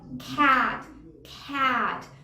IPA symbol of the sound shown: æ